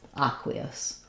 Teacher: If I move from the E to the I'm going to have a little vowel to vowel linking in there. The ya, the high front vowel going to the other vowel, connects with the gliding ya